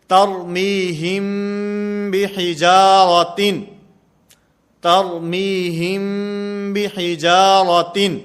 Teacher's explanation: میم ساکن کے بعد اگر با آئے گی تو یہاں پر اخفا ہوگا، جیسے ترمیہم بحجارۃ، ترمیہم بحجارۃ یہاں پر اخفا مال غنہ کا معنی غنہ بھی کریں گے، آواز کو ناک کے اندر بھی لے جائیں گے اور با کو ادا کرتے ہوئے یہ ہونٹوں سے نرمی کے ساتھ ادا کی جائے گی